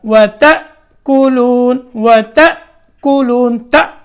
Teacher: الف ساکن حمزہ کی آواز دیتا ہے، تو کیسے پڑھیں گے، جھٹکے کے ساتھ